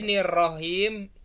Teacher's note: Jadi nirrohim karena ngejar ro jadinya nurrohim.